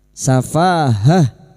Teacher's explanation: ta marbutah di sini yang dibaca waqaf Maka bunyinya ha safahah. Lalu kita mengulang pada kalimat inna inna lanaroka fi safahatin wa inna lanadunnuka minal kadizibin.